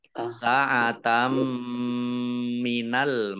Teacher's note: Fathah tanwin bertemu dengan huruf mim, bacaan idgham bi gunnah. Idgham masuk bi dengan gunnah mendengung, masuk dengan mendengung, yaitu masuk ke huruf mim, ditandai mimnya ada tasdidnya, ditahan 2 harokat.